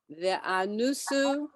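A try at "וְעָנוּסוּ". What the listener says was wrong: You forgot the yud again.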